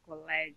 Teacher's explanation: Colégio, então o lé é acentuado.